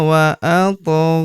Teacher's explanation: huruf gho kita panjangkan dua harakat karena terdapat tanda alif kecil di atasnya yang ini. Alif bengkok atau alif maksarah di depan huruf gho tidak dibaca atau dianggap tidak ada.